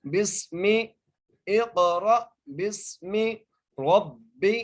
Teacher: آگے با کو سین سے ملائیں گے، سین پر سیٹی سے ادا کریں گے سین کو۔ بسمی، اقرأ بسمی ربی، را کو موٹا کر کے را کو با سے ملائیں گے اور باقی نیچے زیر ہے، باریک کر کے پڑھنا ہے۔